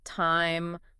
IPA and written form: taɪm (time)